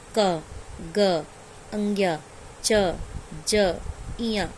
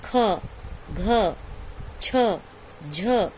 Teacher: सब में हकार आता है, लास्ट में हकार ध्वनि उच्चारण होता है